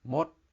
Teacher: no vowel so it's m said with a skeptical tone